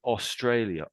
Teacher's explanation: It's not really or anymore. It's more of an oh.